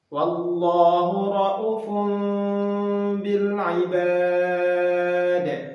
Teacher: Di dalam bacaan riwayat Syu'bah an Asim min tariq Asy-Syatibiyah, kosakata ra'ufun, maka cara membacanya ialah dengan menghilangkan huruf waw atau membacanya dengan 1 harokat